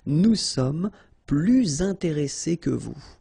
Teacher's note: Okay, and in that case, well, you make this little link, little liaison between the two, so you hear a little bit this S